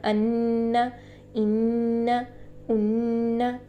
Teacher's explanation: نون کے اوپر تشدید آئے گی تو اس طرح سے بنے گا ان، ان، ان، ٹھیک ہے۔ یہ جو نون کی آواز ہے ہم ناک میں 2 سیکنڈ کے لیے گنگنی سی کر کے ٹھہرائیں گے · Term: غنہ